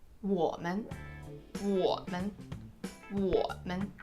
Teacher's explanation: You see, you're stressing the 我. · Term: neutral tone